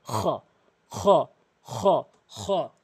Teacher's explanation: খ হলকের শেষ থেকে খ এভাবে আমরা উচ্চারণ করব। · এরপর খ, হলকের শেষ থেকে খ খ খ খ